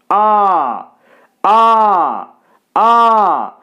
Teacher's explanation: আয়নার সামনে দাঁড়াবেন, বলবেন আ, আ, আ। সম্পূর্ণ প্রসারিতও হচ্ছে না আবার কুঞ্চিতও হচ্ছে না, তাই আটা প্রসারিতর দলেও যাবে না আবার কুঞ্চিতর দলেও যাবে না।